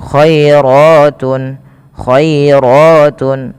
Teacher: lembutkan dalam pelafalan huruf ya-nya yang di mana didahului dengan fathah karena dia ada bacaan Lin